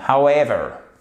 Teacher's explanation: Cependant, si vous regardez bien la phonétique, vous pouvez observer ici que vous avez une espèce d'apostrophe inversée, ce qui signifie qu'en fait, c'est un accent tonique secondaire. Donc, il y a tout de même une petite impulsion au démarrage, si je puis dire, mais on a la vraie impulsion sur la seconde syllabe.